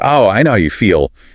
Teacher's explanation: stressing feel to emphasize the shared emotion